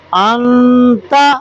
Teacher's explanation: تو اب یہ نہیں کہ جیسے میں نے مثال آپ کو دی انت، اب دیکھو نون ساکن ہے، نون ساکن کے بعد حروف اخفاء آ رہا ہے، اس لیے یہاں غنہ ہوگا۔ اگر یہاں پہ حروف حلقی میں سے کوئی اگر حرف آ جاتا تو پھر غنہ، ٹھیک ہے نا؟